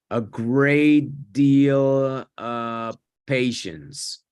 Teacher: Me comí la V. Es muy común comerse esa V en los of.